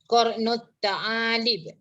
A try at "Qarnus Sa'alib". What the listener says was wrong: Itu bunyi dia sa. Dia bunyinya sa, bukan ta. Sa. TH.